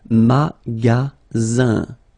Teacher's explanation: you've got only one S between two vowels. Then you get the sound Z, alright? And then the ending here is IN, so it's nasal, it goes in your nose, and it's un.